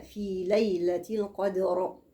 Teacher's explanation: وقف على راء مفخمة